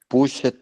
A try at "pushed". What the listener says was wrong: No le unas, mijo. No le, push. Así, mira, push. Unas. Verás, ¿cuándo le vamos a unir? Cuando tú ya lo domines. lo domines, ahí sí, pushed. Esa, push.